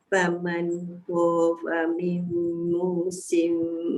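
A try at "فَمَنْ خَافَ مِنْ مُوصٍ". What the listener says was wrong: Dekat kha tu kan, cuba bunyikan kha.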